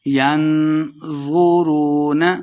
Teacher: ینظرون ین اخفا یعنی غنہ کر کے پڑھیں گے۔ نون ساکن کے بعد حروف اخفا سے زو آ گیا تو غنہ کرنا ہے۔